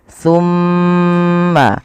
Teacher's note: Ketika mim itu berharakat tasydid, wajib ditahan suara gunnahnya. Ya, tidak boleh langsung summa antum.